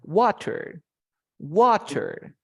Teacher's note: El estrés es la fuerza de voz. Si te digo water, ¿dónde está la fuerza de voz? En wa.